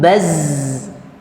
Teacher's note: Zai itu lidahnya ke bawah ke gusi bagian bawah kemudian suara nya keluar di antara gigi suaranya keluar di antara gigi kalau ya Itu keluarnya di tengah